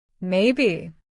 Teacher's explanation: Uncertainty. Say maybe with a falling or hesitant tone. This shows doubt or hesitation.